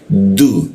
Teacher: huruf du ya menggunakan ujung lidah bertemu dengan gigi dia. Du, nah, seperti itu posisinya dengan ujung lidah dia.